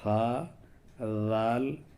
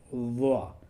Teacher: ان تینوں کا مخرج تو ایک ہی ہے، زبان کی نوک اور ثنایا اولیہ کا کنارہ، لیکن ضا میں فرق یہ ہے کہ ذال اور ثا ان دونوں میں آواز صرف نرم ہوتی ہے، اور ضا میں آواز نرم ہونے کے ساتھ ساتھ ایک طرح سے منہ بھر کر کے آواز آتی ہے